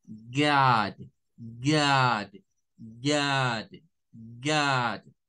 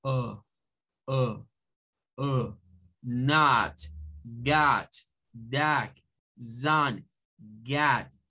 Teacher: es como tratar de decir la A, pero con mis labios en forma de O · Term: mezcla entre una A